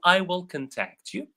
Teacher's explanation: You can notice that when it is a verb it's the second syllable that is pronounced.